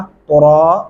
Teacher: रा को मोटा और पुर करके पढ़ेंगे